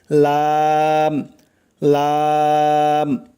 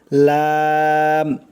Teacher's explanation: জিহ্বার আগার কিনারা সামনের উপরের দাঁতের মাড়ির সঙ্গে লাগাইয়া উচ্চারণ হয় লাম লাম, স্বাভাবিকভাবে উচ্চারণ হবে লাম।